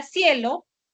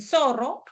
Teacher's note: La consonante fricativa interdental, que puede ser representada por la letra C o por la letra Z